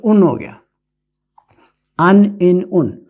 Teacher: یعنی کہ تنوین کی آواز جو ہے وہ نون کی آواز نکلتی ہے